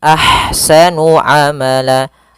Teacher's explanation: Kemudian pada lafal ahsanu, di sini ada ha yang berharakat sukun maka dinamakan dengan ha hams. Alirkan nafasnya, kemudian baru dibaca dengan sa-nya